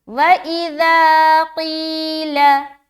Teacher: यहाँ पर बिल्कुल लंबा नहीं करना, लाम को जल्दी छोड़ना है